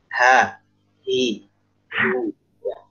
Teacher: Tapi murni benar-benar H yang di pangkal tenggorokan tanpa ada desahannya.